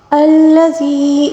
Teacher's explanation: یا مدہ ہے، اس کو ایک الف کے برابر کھینچ کر پڑھنا ہوگا